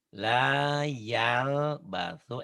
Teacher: L-nya ditahan seperti ditahan sebentar. La yal basu tapi nggak ditahan sebetulnya di sempurnaan pengucapan L-nya.